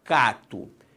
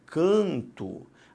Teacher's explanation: o que aconteceu foi simplesmente a nasalização da vogal a · na verdade o som é diferente por uma nasalização e não pela entrada de um novo fonema